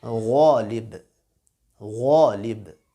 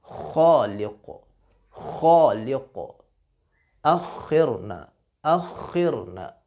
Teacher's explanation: دونوں حروف کو موٹا پڑھنا ہے، خا اور غین، اور دونوں میں فرق یہ ہے، ظاہر ہے ایک ہی ان کا گھر ایک ہے، ان کا کمرہ ایک ہے، لیکن فرق یہ ہے کہ دونوں کو موٹا پڑھیں گے، لیکن غین میں خراش کی آواز پیدا نہیں ہوگی، خا میں تھوڑی سی خراش کی آواز پیدا ہوگی